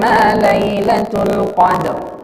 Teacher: Jadi Al-Qadr, syahr, itu bunyi huruf R-nya mesti kedengeran minimal dengan telinga kita. Qadr, dalnya mantul, qalqalah, lalu huruf ro-nya terdengar.